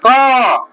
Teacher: जैसे जैसे जैसे देख लो, कवर्ग क तो कंठ से हो रहा है, उच्चारण करो क से। तो क तो कंठ से आ रहा है।